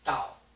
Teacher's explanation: So it starts from the first tone, drops all the way down. Yes. Very quickly.